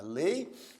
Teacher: a letra e é aqui nós temos no ditongo né Ei a letra e é vogal porque aparece com mais força e a letra i é a semivogal que aparece com menos intensidade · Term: ditongo decrescente